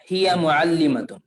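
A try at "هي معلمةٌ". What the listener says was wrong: معلمۃن بول، دو پیش کے ساتھ بولنا.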